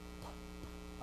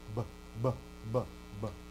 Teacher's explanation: Labials, p, p, unvoiced, p, right? And then voiced, beta, b, b, b, b.